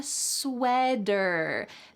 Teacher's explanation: In American English, a T that is surrounded by vowels or vowel sounds will change to a D.